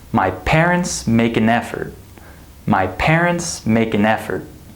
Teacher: We have stress in this word, my parents, in this word, make, and in this word, effort. However, these 2 words do not receive stress.